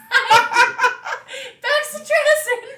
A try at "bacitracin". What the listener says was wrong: No! Number one, there's no X. And number two, it's bacitracin.